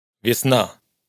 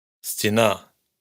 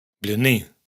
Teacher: Lo que se escucha es un sonido que tiende hacia i pero menos marcado, como a medio camino entre la i y una e cerrada.